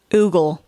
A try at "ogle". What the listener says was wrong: No, ogle. Ogle. We're both wrong because it's not oogle and it's not ogle, but it's ogle. O-G-L-E, not O-O-G-L.